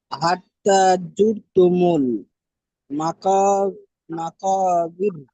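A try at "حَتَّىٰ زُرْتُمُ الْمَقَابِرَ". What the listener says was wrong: জি, মাশাল্লাহ,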